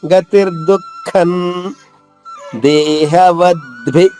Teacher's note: దే ఉంది కాబట్టి ఇక్కడ అనుస్వరం నగా పలకాలి